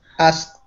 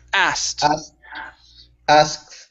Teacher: so we skip over the K sound. Instead of saying asked, it's asked.